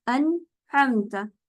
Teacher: नून की जो सिफत है वो गुन्ना है, ठीक है, और ये सिफत नून की एक लाजमी सिफत है, इसलिए ये सिफत मौजूद रहती है, लेकिन ड्यूरेशन टाइम पीरियड कम हो जाता है। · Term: इजहार